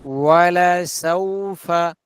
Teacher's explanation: ওয়াও ঠোঁট গোল হবে।